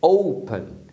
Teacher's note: Você tem duas sílabas, open, mas a primeira é forte